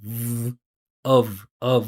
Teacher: the reduction of of or the reductions in general those final consonant sounds are voiced